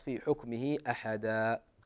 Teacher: الأمر الثاني قضية المدود في آخر الكلمات، يعني إذا في حكمه أحدا، هي حركتين فقط، في حكمه أحدا وتقف.